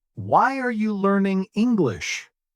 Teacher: Voice falls on English. Fantastic. That is falling intonation.